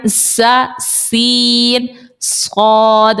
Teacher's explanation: آگے بڑھیے تو سا سین صاد، ان تینوں کا مخرج بھی سیم ہے. زبان کی نوک جب نیچے کے دانتوں کے اندرونی کنارے سے لگے تو سا سین اور صاد نکلتا ہے. زبان کی نوک ٹپ آف دی ٹنگ، اس کو لیجئے آپ، اس کے نیچے کے دانتوں کے اندرونی کنارے سے لگائیں.